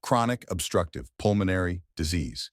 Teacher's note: Chronic with stress on cra, obstructive, stress on struck, pulmonary, stress on pool, and disease, stress on z's.